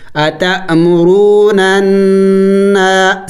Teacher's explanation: نون مشدد پر ہمیشہ غنہ ہوگا. نون مشدد اور میم مشدد پر غنہ کیا جاتا ہے. غنہ کہتے ہیں ناک میں آواز لے کے جانا